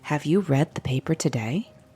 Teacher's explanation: add a rising tone like have you read the paper today your voice Rises on today to show whoever you're talking to hey I'm asking you a question